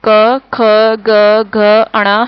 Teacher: इसको बोलते समय जीभ का पिछला भाग गले को छूता है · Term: कंठ